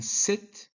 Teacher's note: s in sit uses the tongue tip near the alveolar ridge